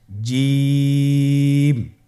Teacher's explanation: জিম হরফটি বারিক হরফ এটা উচ্চারণ করতে হবে তিন আলিফ টেনে